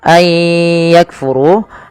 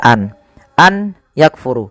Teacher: Tapi karena di sini ada nun mati bertemu dengan huruf ya dan di sini warnanya abu-abu artinya nunnya dianggap tidak ada langsung dibaca ke ya maka sambil dimasukkan ke ya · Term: idgam bigunah